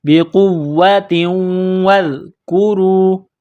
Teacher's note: تو تا کو واو کے ساتھ ملانا ہے، پلس کرنا ہے، واو کے اوپر تشدید ہے تو واو میں سختی کرنی ہے ، واو کو ذال کے ساتھ ملائیں گے، ذال کو نرم